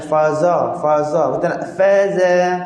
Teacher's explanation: Yang kedua, masa kita sebut fazadahumullah, fa dengan zai kat sini kita nak bunyi nipis